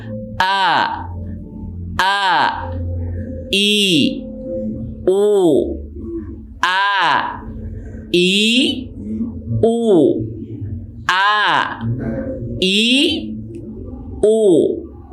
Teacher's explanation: Hamzah itu keluarnya dari pangkal tenggorokan. Coba dirasakan ketika kita mengucapkan A.